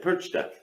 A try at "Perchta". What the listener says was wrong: Yeah, but you don't have the R sound. Percha.